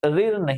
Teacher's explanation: जैसे ही आप बोलेंगे तो शुरुआत तो र से होगी उसके बाद इ आ जाएगी